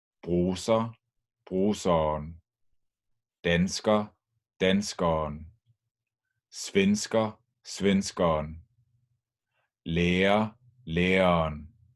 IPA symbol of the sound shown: ʌ:n